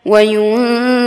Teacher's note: নুন সেকিনের বামে জাল অর্থাৎ ইকফা আমরা নাকের ভিতর লুকিয়ে অস্পষ্ট গুণা করে পড়ব, এবং এখানে জেরের বাম পাশে যজমালা ইয়া এবং জবরের বাম পাশে খালি আলিফ দুই জায়গায় আমরা এক আলিফ টান দিয়ে পড়ব।